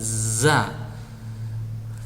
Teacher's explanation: Makhrajnya di ujung lidah, menghadap dan mendekat antara gigi seri atas dan bawah.